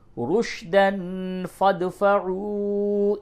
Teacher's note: رُشْدًا تنوین کے بعد فا ہے، اس جگہ پہ اخفا کیجئے۔